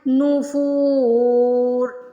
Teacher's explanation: عتو ونفور، عتو ونفور، فا کو یہاں پہ کھینچ کے ادا کرنا ہے کیونکہ پیش کے بعد واو ساکن آ رہی ہے اور را کے نیچے دو زیر ہیں تو ان کو ہٹا کے ساکین لگائیں گے کیونکہ یہاں پہ ہمیں وقف کرنا ہے۔ فو کو ہم 1 سیکنڈ سے زیادہ بھی کھینچ سکتے ہیں کیونکہ یہاں پہ ہمیں وقف کرنا ہے۔ وقف کی صورت میں جب ہم الف مدہ، واو مدہ، یا مدہ کو 1 سیکنڈ سے زیادہ کھینچتے ہیں تو وہ مد عارض بن جاتی ہے، تو اس کو ایسے پڑھ سکتے ہیں نفور۔